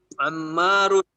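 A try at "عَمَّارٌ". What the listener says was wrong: Di harokat akhirnya dibaca. Harokat akhirnya dibaca coba.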